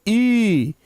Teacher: तो हर्ष बोलेंगे तो बोलेंगे ई। लेकिन जब दीर्घ ई बोलेंगे तो ई। थोड़ा सा जोर लगाना है। थोड़ा सा उसमें टाइम ज्यादा देना है। तब उसको दीर्घ ई कहेंगे।